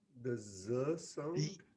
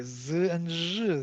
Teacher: Z is the fricative, but voiced fricative.